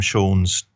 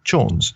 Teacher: So the ancient Celtic name for beaver was shorn, S-H-O-R-N. And then the Cumbrian dialect hardened the sh sound to a ch, which is a classic example of consonantal shift